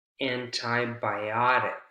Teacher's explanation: you have a lot of stressed syllables, a lot of secondary stress in this word antibiotic